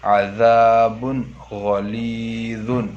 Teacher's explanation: عذاب غلیظ، تو یہاں بھی 2 پیش کی تنوین کے بعد غین آ کر ہے، تو 2 پیش کی تنوین کو ظاہر کر کے بلا غنہ کے جلد پڑھیں گے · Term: اظہار